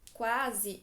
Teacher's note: quando eu falo a palavra quase quase eu pronuncio tanto u quanto a